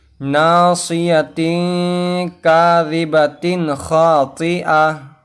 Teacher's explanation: ابھی دیکھیے اس میں یہ ناصیتن کے بعد اس میں دو زیر آیا ہے یعنی تنوین آیا ہے، اس کے بعد کاف آیا ہے، تو یہاں پر اخفا ہوگا یعنی گنہ کر کے پڑھنا ہے